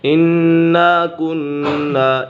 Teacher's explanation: انا كنا، یہاں پر نون مشدد ہے، کننا میں نون مشدد ہے، اسی وجہ سے اسے غنہ ہوگا۔ نون مشدد اور میم مشدد میں ہمیشہ غنہ ہی ہوتا ہے تو یہاں غنہ کر کے پڑھیں گے۔